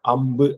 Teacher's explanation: உதட்டோட அசைவுகள் மட்டுமே இதுல இருக்கும் நாக்கு வந்து எங்கேயும் போய் தோன்றும் இல்ல அம்பு அப்படின்னு சொன்னீங்கன்னாவே தெரியும் இது